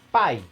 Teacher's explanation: Pai é um ditongo decrescente porque tem uma vogal e decresce para uma semivogal. Vai do forte para o mais fraco.